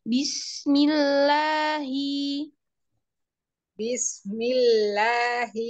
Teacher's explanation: Sin sukunnya diloncat jangan diloncat alirkan